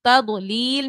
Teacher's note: تضلیل میں ضاد کو ہم نے پر پڑھنا ہے، موٹا پڑھنا ہے